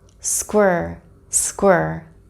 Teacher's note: My tongue is elevated, bunched back towards the middle of my palate, and it's touching the inside of my top teeth.